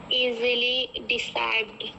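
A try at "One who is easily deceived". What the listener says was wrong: डिसाइड नहीं लिखा है, फिर से पढ़ो।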